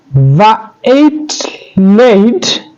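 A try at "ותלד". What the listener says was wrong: And here's that tav. Again, here's the tav that eludes you a little bit. Vateled.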